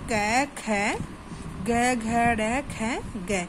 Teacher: जैसे है कोमल तालव्य। इन व्यंजनों को बोलते समय जीभ तालु के सबसे पिछले भाग का स्पर्श करती है।